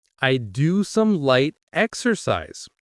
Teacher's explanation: The word exercise, 3 syllables, stress on the first.